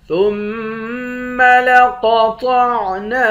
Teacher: ثُمَّ لَقَطَعْنَا، ثا کو میم مشدد کے ساتھ ملا کر میم پر غنہ کریں گے، قاف اور طا دونوں کو موٹا پڑھیں گے، نون کے بعد الف ہے، الف حروف مدہ ہے، ایک الف کے مقدار کھینچ کر پڑھیں گے۔